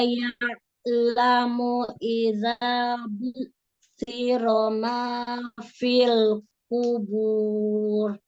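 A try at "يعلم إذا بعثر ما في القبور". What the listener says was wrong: Huruf ainnya disempurnakan, kasih dhammah, kasih bainiyah, afwan, bukan dhammah. Huruf ain itu kasih bainiyah, alirkan. Jadi jangan hilang huruf ainnya, apalagi ngerem, ya. Ya, nah, alirkan, ya. Alirkan itu huruf ain dari mana makhrajnya? Dari tengah tenggorokan, ya. Berarti kalau dia sukun, itu kan berhenti di huruf ain, ya. Makhrajnya itu nempel di huruf ain, tapi dialirkan suaranya, ya. Dibuka ya, tenggorokannya dibuka.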